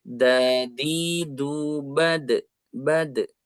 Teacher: ujung lidah dengan dinding gigi seri atas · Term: huruf Dal